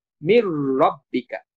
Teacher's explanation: নুনটা যেহেতু র এর সাথে যুক্ত হয়ে গেছে তখন র আমরা দুইবার উচ্চারণ করব। এ কারণে এই তাসর চিহ্নটা দেওয়া হয়েছে। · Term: ইদগাম